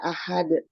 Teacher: Ahad itu dal karena wakof dan disukunkan dan mempunyai sifat qalqalah kubro. Jadi dibaca ahad.